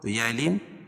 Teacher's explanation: تنوین کے بعد ادغام مع الغنہ کے 4 حرفوں میں سے یا ہے تو یہاں غنہ کر کے پڑھیں گے